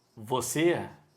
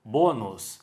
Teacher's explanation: o acento circunflexo também vai marcar a sílaba tônica e o timbre fechado